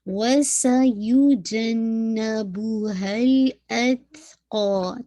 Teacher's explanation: سین پہ ویسلنگ ساؤنڈ